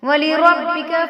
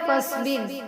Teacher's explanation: ربک میں را پر ہوگی، فاصبر میں را باریک ہوگی۔